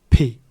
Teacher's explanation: This is with aspiration and without voicing